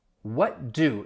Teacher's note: the t and the d sound, your tongue is in the same position. So they are overlapping, but really what happens is that t sound, you're not really going to hear it. So really you don't hear any type of t, even though it would be a stop t.